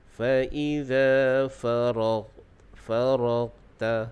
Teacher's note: Dalam ayat yang ke-7 ini kita lihat dari segi sebutan huruf, iaitu pada huruf ghin. Ghin makhrajnya adalah di hujung kerongkong. Cuma jangan kita tekan sangat.